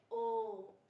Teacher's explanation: ओ को हम 3 गुना समय देंगे उच्चारित करने में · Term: प्लुत